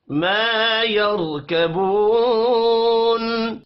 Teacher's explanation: الف مدہ ہے، ایک الف کے برابر کھینچ کر پڑھیں گے